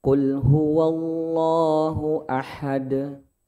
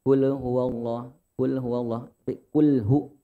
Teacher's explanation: pada lafaz kul huwallahu ahad itu harus dihindari pantulan e. Jangan sampai ada pantulan kul huwallah, kulhu.